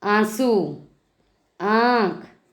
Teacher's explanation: नाक से बहुत कम और मुख से अधिक, दोनों से श्वास वायु बाहर आती हैं। ध्वनि का उच्चारण मुख के साथ साथ नाक से भी होता है। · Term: अनुनासिक